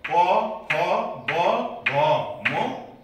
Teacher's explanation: दुवै ओठको सक्रियताबाट उच्चारण हुने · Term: ओष्ठ्य